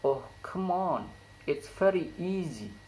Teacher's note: The high fall intonation occurs in word on and easy.